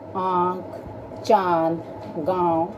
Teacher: अनुनासिक। इनका उच्चारण नाक और गले दोनों से होता है। इनका चिन्ह चंद्र बिंदु होता है